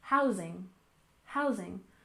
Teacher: And housing, we stress the first syllable, housing, housing.